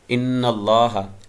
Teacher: ان اللہ نون مشدد ہے تو نون پہ غنہ کریں گے، اور میم بھی جب اس پہ تشدید ہوگی مشدد ہوگا تو پھر اس پر بھی غنہ کریں گے، تو اصوات الغنہ 2 ہیں، 2 حروف ہیں نون اور میم۔